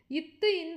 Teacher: இத்து இந்து என்பது நாவின் நுனி மேல்வாய் பல்லின் அடி